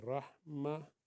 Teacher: تا کو ہا میں ملا دیں گے